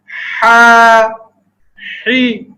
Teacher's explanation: ہا بھی حلق کے درمیانی حصے سے ہی ادا ہوتا ہے, لیکن جیسے کہ ذکر کیا گیا تھا اس کے اندر سانس جاری رہتی ہے.